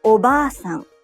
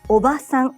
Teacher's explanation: the a in ba is held for two claps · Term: long vowel